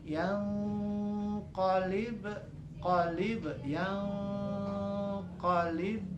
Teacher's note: huruf baknya bertanda baca sukun, dipantulkan